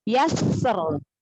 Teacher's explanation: Sofirnya tampakkan dulu sifat sofir pada sinnya.